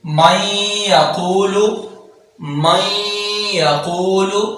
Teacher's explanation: نون ساکن ہے، آگے یا ہے تو ادغام یرملون ہوگا، نون کو یا میں مدغم کر کے پڑھیں گے۔ مَن يَقُولُ، مَن يَقُولُ، قاف کو پر پڑھیں گے کیونکہ نقطوں والا قاف ہے۔